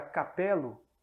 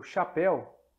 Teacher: Outro som também, inicial, importantíssimo, é o som do K virar Ch. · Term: palatização